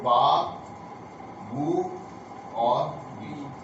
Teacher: الف ساکن واو ساکن یا ساکن یہ پہلا مخرج ہے جوف دہن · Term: حروف ہوائیہ